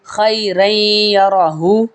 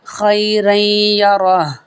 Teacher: جب ہم وقف کریں گے تو ہم اس کو ہا کو ساکن کر دیں گے